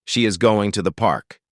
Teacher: They are said very quickly and softly, almost blended into the stressed words around them. >> Notice how is, to, and the become very soft and quick. They almost disappear. · Going and park are the key words here. The words is, to, and the are function words, and they are reduced. They are said very quickly and softly, almost blended into the stressed words around them.